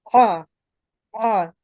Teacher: So ayn, if we put fatah on Hamza and ayn, so ayn should be ayn should be pronounced from throat, the middle of throat. So ah. But Hamza is a comparatively soft sound, ah, right?